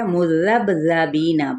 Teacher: با پہ کلکلا ہوگا اور بی پہ یائے مدہ کا قاعدہ